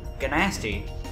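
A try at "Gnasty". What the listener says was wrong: The first damn G is silent.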